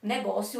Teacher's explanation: Negócio é uma paroxítona, ou seja, é a penúltima sílaba com um som forte.